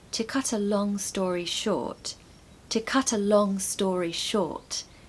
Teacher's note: what you want to do is stress the last three words